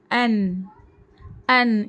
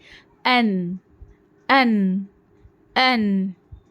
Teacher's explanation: जबान की नोक और सना उलिया के मसूर से एक हर्फ नून निकलता है